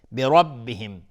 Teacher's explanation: بربهم، برب نمیگیم برا. را اینجا استعلاست چون فتحه داره.